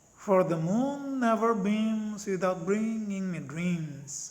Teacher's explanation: Three syllables per meter. The first two syllables are unaccented, and the third syllable is accented. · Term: anapest